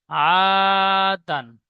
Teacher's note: আলিফ মাদ্দা এক আলিফ পরিমাণ টান দিয়ে পড়তে হয়